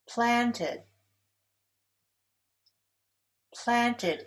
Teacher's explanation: Planted is stressed on the first syllable.